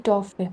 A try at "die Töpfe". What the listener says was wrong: die Töpfe. Oh, Umlaut. Ja, die Töpfe.